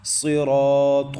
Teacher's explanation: تو صاد حروف مستعلیہ میں سے ہے، اس کو پر بھی پڑھنا ہے۔ صاد سیٹی والے حروف میں سے بھی ہے، اس کو پڑھتے وقت سیٹی کا ساؤنڈ بھی نکالنا ہے